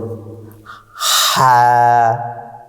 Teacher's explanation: হা হরফটি হলকের মধ্যখান হইতে উচ্চারিত হয়।